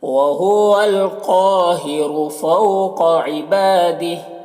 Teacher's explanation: فو میں واولین سے نرم آواز کے ساتھ جلد پڑھیں گے